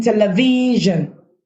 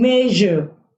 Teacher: the voice counterpart of the sh sound, which is pronounced as zh. Now the spelling form for zh sound is SISGE/GI.